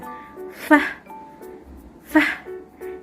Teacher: it is actually labiodental because this happens when our upper teeth and lower lip comes together. F, f. You can actually see how my upper teeth and lower lip comes together when saying f.